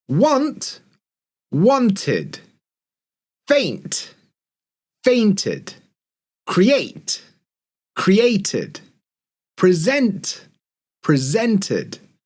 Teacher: So the first rule we're going to call the tid, did rule, okay? And this is for words that end in a t sound or a d sound. When that happens, we're adding an extra syllable, so t, ud, tid, or d, ud, did, okay?